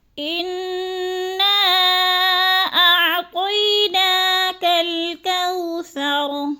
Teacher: انا کی نون مشدد ہے، سختی سے جماؤں کے ساتھ ہم نے غنہ کرنا ہے ادھر